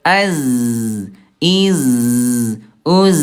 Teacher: Huruf zai juga sama nih ayah Bunda, dia rokhawah, dia lemah. Suaranya mengalir.